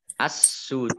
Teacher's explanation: Kemudian jim domah wawu sukun mat tobi'i, tetapi karena bertemu dengan huruf terakhir yang dibaca sukun maka menjadi mat arif lis sukun, dibaca panjang, boleh 2, 4 atau 6 harokat. Dalnya menjadi sukun, oleh karenanya dibaca kolkolah